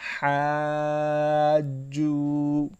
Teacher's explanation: واو کے اوپر حروف مدہ تو اسے تھوڑا سا لمبا کریں گے، ایک سیکنڈ یا ایک الف کے برابر